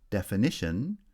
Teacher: definition then has secondary stress on the first syllable and primary stress on the third syllable